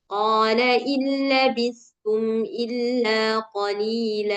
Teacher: Jadi dia masuk anggap aja enggak ada nun di situ, enggak tertulis. Jadi langsung masuk ke lam yang bertasydid. Nah, tanpa ghunah karena dia idgham bila ghunah. Nah, jadi masuk aja enggak perlu digunahkan.